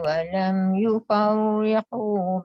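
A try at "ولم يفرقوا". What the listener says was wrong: Itu juga nipis. Yufarriqu walam yufarriqu.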